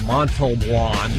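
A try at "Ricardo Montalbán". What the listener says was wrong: No, it's Ricardo Montalban. The L is before the B.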